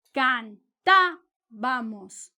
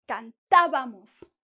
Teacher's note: Esta sílaba de ta es high, alta. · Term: sílaba tónica